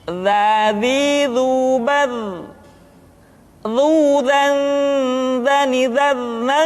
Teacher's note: Diucapkan dengan menyentuhkan ujung lidah dengan dinding dua gigi seri bagian atas seperti kita mengucapkan huruf tha. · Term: huruf dha